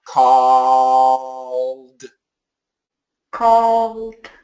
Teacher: I'm hearing too much O. Let's make the AW really long.